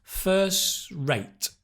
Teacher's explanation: Again, it's not first rate. The /t/ is cut.